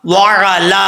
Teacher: عین زبر را، لام کھڑا زبر لام، وعلا. ایک الف کی مقدار لام کو لمبا کریں گے · عین کے اوپر زبر ہے، حمزے کی آواز نہیں آنی چاہیے